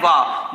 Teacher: दंतोष्ठ वर्ण केवल वाह है जिसको दांत और ओष्ठ दोनों की सहायता से बोले जाने वाला वर्ण